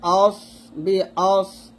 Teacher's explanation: এখানে সিনের মতো করা যাবে না, সদটা মোটা করে বলতে হবে